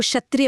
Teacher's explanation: आधा क और श से मिलकर बनता है। इसे बोलने के लिए गले से क की आवाज निकालनी पड़ती है और उसी सेकंड जीभ को तालू पर ले जाकर घर्षण करना होता है। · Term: संयुक्त व्यंजन